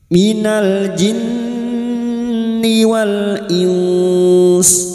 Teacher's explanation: nun yang bertasdid ghunah musyaddadah kita dengungkan selama tiga harakat